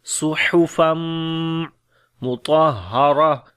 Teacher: تنوین کے بعد میم آ گیا، یعنی کہ میم کے اوپر شد ہے تو غنہ کریں گے